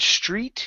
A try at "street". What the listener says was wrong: Instead of saying stret, okay, it's E. Raise your tongue in the back of your mouth. Street.